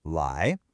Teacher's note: pronouncing lie with a flat tone instead of making it rise. It should almost sound like you're asking a question. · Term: rising second tone